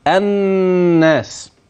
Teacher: نون بها غنه واضحه في اعلى مراتبها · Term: نون مشددة